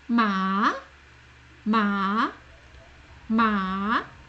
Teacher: word for mother or mum hi mum mama mama go now the second tone is the rising tone it starts a bit lower and it rises it goes up